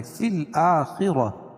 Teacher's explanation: خا کو پور پڑھیں گے کیونکہ حروف مستعلیہ میں سے را بھی پور پڑھی جائے گی، کیوں؟ اس لیے کہ را · را بھی پور پڑھی جائے گی، کیوں؟ اس لیے کہ را کے اوپر زبر ہے